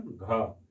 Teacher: वैसा वर्ण जिसके उच्चारण में वायु अल्प प्राण की अपेक्षा ज्यादा निकलता है, उसे हम लोग क्या कहते हैं, महाप्राण कहते हैं